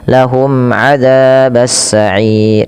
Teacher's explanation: Dijelaskan suara mimnya karena dia izhar syafawi